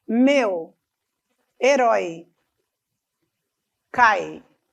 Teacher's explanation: eu começo com um som forte e ele fica mais fraco começa com uma vogal e termina com uma semivogal por isso que é decrescente o som diminui Meu Herói cai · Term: ditongos decrescentes